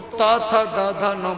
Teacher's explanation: जब जीभ दांत में टकराएगी तो त, थ, द, ध, न बोलेगा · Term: दंत्य वर्ण